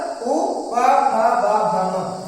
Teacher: इन सब को जब हम कहेंगे तो हमारे दोनों ओष्ठ जो है वो आपस में स्पर्श कर रहे हैं, और इसका उच्चारण भी क्या है, ओष्ठ ही है।